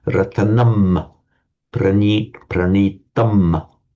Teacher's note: it would be chanted as Ratanam, Pranitam, with a full M sound.